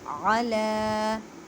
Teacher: اللہ کے لفظ کی لام کو لکھیں ختم اللہ ختم اللہ علی، عین کو حلق کے درمیان والے حصے سے ادا کریں اور لام کو ایک الف کی مقدار میں کھینچ کر پڑھیں کیونکہ لام کے اوپر کھڑی زبر ہے